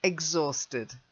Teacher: But it's a silent H. So it's exhausted.